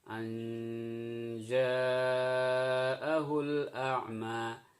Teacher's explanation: Jadi hilang suara an-nya, suara tanwinnya hilang, masuk ke dalam suara aj.